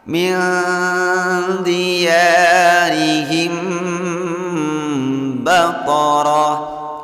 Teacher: Hukum bacaan ikhfa syafawi. Membacanya didengungkan 2 ketukan dengan cara bunyi mimnya ditahan.